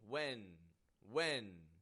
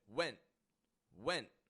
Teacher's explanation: I'm stopping the sound abruptly at the ending of it